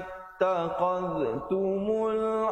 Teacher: tum izhar syafawi jangan dipanjangkan, sempurnakan bunyi tum terus masuk